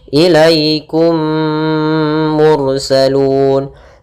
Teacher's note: mati bertemu mim kita namakan dengan am Mimi maka caranya adalah memasukkan mim pertama kepada kedua sambil ditahan gunahnya